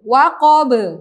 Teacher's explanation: huruf ba itu sama dengan huruf qaf termasuk huruf qalqalah. Maka cara membacanya harus dipantulkan. Cara memantulkannya seperti pada qaf tadi, mengalir, tidak ada paksaan, tidak ada paksaan dalam memantulkan.